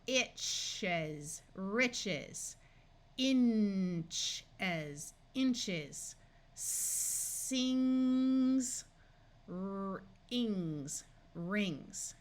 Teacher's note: After CH or NG, S will take the voice sound of Z